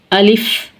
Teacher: اعوذ باللہ من الشیطان الرجیم، بسم اللہ الرحمن الرحیم۔ الف، الف جوف دہن یعنی منہ کے خالی حصے سے ادا ہوتا ہے